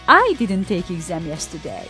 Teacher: We are stressing now the first word, the pronoun I.